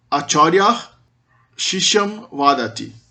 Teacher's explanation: antes da palatal shi não tem visarga palatal. O visarga continua um H, não muda para S.